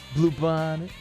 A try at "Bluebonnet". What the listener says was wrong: She's putting the emphasis on the wrong syllable. Blue Bonnet. Or Blue Bonnet.